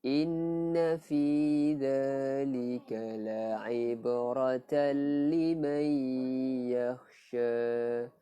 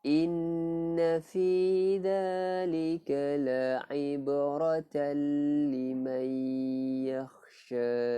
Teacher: Kemudian liman yakhsha, nun mati bertemu ya, idgham bi gunnah. Tanwin ataupun nun mati bertemu dengan ya, nun mim waw, hukumnya idgham bi gunnah, memasukkan masa terdengung.